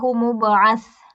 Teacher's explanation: با پہ قلقلہ ہوگا اور سا جو ہے اس کو سین نہیں کر دینا